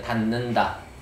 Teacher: 안 울림 소리가 누구를 울림 소리를 닮아가서 닫는다라고 하는 거예요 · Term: 비음화